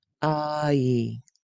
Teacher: Begin with ah and move your mouth to ee. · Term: long i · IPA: /ai/